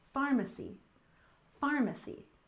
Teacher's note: We stress the first syllable, pharmacy, pharmacy. Remember that PH can make the F sound in American English.